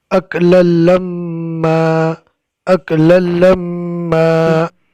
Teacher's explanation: دو زبر کی تنوین کو الف مدہ سے بدل دیں گے اور میم کے اندر گنہ ہوگا، میم مشدد اور نون مشدد۔